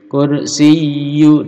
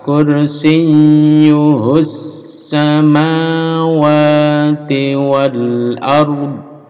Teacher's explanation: Wasi'a kursiyyu, nah ini tasdid. Kursiyyu ditekan ditahan 2 harokat.